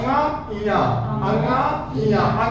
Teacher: देखेंगे नाक में चला जा रहा इया भी नाक में चला जा रहा